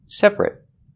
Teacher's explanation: Separate with the it sound. Because when you say separate, the stress is on the first syllable only, and that syllable ate is not stressed. So we change the pronunciation to it.